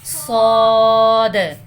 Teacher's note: موٹا کر کے بیٹے سیٹی کی آواز کے ساتھ